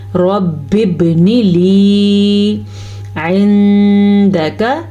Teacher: نون کو ہم کسی صورت میں لمبا نہیں کر سکتے کیونکہ نون کے نیچے صرف اور صرف زیر ہے